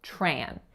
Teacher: The vowel, how I'm saying it, is a nasalized A sound. However, in some dialects and some regions, you may hear this without the nasality.